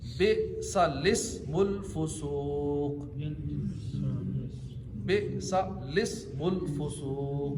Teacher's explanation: اس کلمے میں لام سے پہلے اور لام کے بعد دونوں الف نہیں پڑھیں گے، لام کو زیر دے کر پڑھیں گے